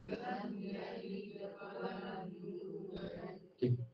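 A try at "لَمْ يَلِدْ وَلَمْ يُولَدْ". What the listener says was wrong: Jangan kita bunyi de de de menunjukkan lidah kita berada pertengah lagi atas. Kita nak de. De. Beza tu, de dengan de.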